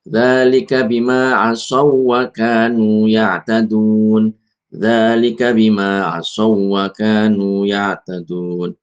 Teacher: ketika ada ya tasydid atau wau tasdid ini enggak usah dikasih ghunah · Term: tanpa ghunah